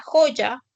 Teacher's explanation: Luego tienes la fricativa velar sorda que es representada por la letra J